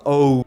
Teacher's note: Oh, there's a W at the end, sort of. Oh. Spanish, you literally just take the beginning of O and then you stop there.